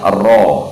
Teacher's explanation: Ada getaran di ujung lidah dan hukumnya dibaca tafkhim